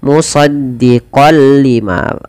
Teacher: dengan bacaan idgham bila ghunna dengan memasukkan tanwinnya kepada huruf lam. Idgam itu pada dasarnya adalah memasukkan tanwin atau suara nun sukun kepada huruf setelahnya. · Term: idgham bila gunnah